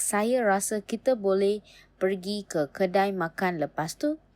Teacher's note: A phrase like saya rasa kita boleh pergi ke kedai makan lepas tu uses a slight pitch rise or extension to signal continuation